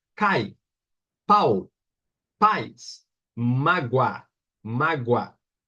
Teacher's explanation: uma vogal com um som mais intenso e outra menos intenso uma vogal com som mais forte e outra com som mais fraco essa com um som mais fraco é a semivogal então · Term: ditongo